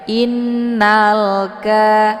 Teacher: Alif lamnya dibunyikan secara jelas atau jelas bunyi l-nya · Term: alif lam alqamariah